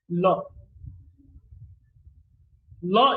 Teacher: the state of the glottis is voiced because the vocal cords are held loosely together and the air passes through there · The place of articulation is is alveolar. That is, the tip of the tongue touches the alveolar or the teeth ridge, and the manner of articulation is lateral. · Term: lateral sound